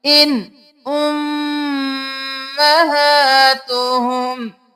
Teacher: آگے حروف حلقی میں سے حمزہ آ گیا، ہم اظہار کر کے پڑھیں گے